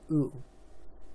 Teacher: pronounced with a short high back vowel